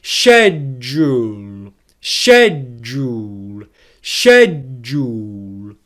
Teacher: Can you hear there how the ʃedʒ is louder, stronger, and produced with more force than the uhl? That's because it is a stressed syllable in English. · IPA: /ˈʃedʒ.uːl/